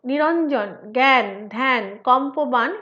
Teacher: পদের শেষে একক ব্যঞ্জনের পরে অবস্থিত অকার লোপ পায়। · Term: অন্তঃস্বরের লোপ